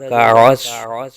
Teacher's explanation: عین کے بعد صاد کو پر آ جائے گا